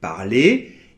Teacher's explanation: le E et le R forment un digramme qui est prononcé [e]